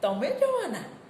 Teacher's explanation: તમારો ભાર તમે પર છે. ત્યાં તમે તમારું આશ્ચર્ય પ્રગટ કરી રહ્યા છો. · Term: બલાઘાત